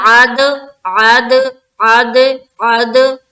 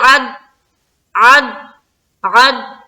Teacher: آواز ہماری ٹکرا کر ڈبل ڈبل معلوم ہونی چاہیے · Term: قلقلہ